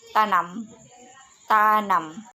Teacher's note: ciri-ciri hidup, nasal, apikoalveolar